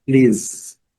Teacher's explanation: Aqui o S já tem o som de Z, please. Nós temos que fazer um subirzinho, né?